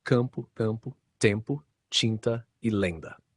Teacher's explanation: Nessas palavras, o som nasal está concentrado na vogal e a consoante final não é plenamente pronunciada como um fonema separado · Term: nasalização da vogal anterior